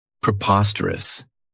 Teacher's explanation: This adjective has 4 syllables, and the stress is on that second syllable.